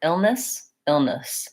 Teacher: the first syllable is stressed and long and has a clear vowel and the second syllable is short and reduced